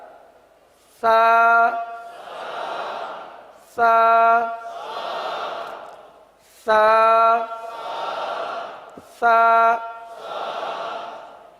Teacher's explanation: زبان کا سرا اور اوپر کے دانتوں کے اندرونی کنارے سے ادا ہوتا ہے